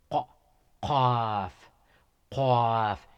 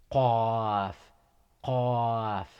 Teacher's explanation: You squeeze your upper portion of your throat and ejecting the sound qaf, qaf. It is pronounced from the deepest part of the throat.